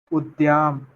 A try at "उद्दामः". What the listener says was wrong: उद्दामः अत्र दकारद्वयम् उद्दामः उद्दाम दाम अस्ति उद्दाम